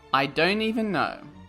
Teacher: Americans tend to omit the T sound in a sentence, so they would probably say, I don't even know, and they would connect the N sound with the E from even.